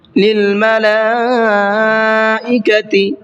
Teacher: لام کے اوپر بڑا مد ہے تو اس کو کھینچ کر کے پڑھنا ہے 4 سے 5 الف کی برابر